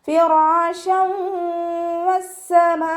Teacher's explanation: ഫിറാശൻ വസ്സമാ, light ആക്കിയിട്ട് ഉച്ചരിക്കാൻ ശ്രദ്ധിക്കുക. നമ്മുടെ മേലെ മുൻപല്ലിൻ്റെ അറ്റം താഴെ ചുണ്ടിൻ്റെ ഉൾവശത്ത് വെച്ചിട്ട് ഉച്ചരിക്കുക · തെൻവീനിന് വാവിലേക്ക് ലയിപ്പിച്ച് ഒന്നയോട് കൂടി ഓതി കൊടുക്കുക കേട്ടോ. ഇവിടെ തെൻവീനെ ശ്രദ്ധിച്ചാൽ അറിയാം, ഒന്ന് കഴിഞ്ഞിട്ട് ഒന്ന് എന്നുള്ള രീതിയിലാണ് നിൽക്കുന്നത്, ഒരുമിച്ചല്ല. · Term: ഇദാം ബെഗുന